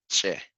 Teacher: Some pronounced it as with a T and a SH sound. For example, uh, like the te and the she together, giving it like the che.